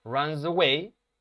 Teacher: Ese sonido de la Z ahí entre runs y away, runs away, es una Z